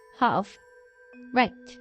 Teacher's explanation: In Eastern American, 미국의 동부 쪽에서는 especially some New England varieties, Boston, the lower and more back vowel is common.